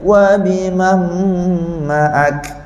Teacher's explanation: masa kita sebut ma'ak, kita nak angin kaf keluar dalam keadaan dia nipis. Jadi masa kita sebut ma'ak tu kita senyum ma'ak.